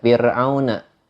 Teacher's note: biasa kita baca fir'auna karena dibacanya tipis, hukumnya tarkik